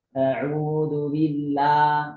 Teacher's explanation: yang berharakat fathahnya sepertinya terlalu terbuka